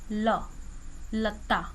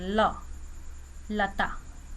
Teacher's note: ल, लता, वह ऊपर लगी रहती है, और जो हवा है वह साइड से निकल जाती है, हमारी जिह्वा के दोनों साइड से हवा निकलती है। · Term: पार्श्व व्यंजन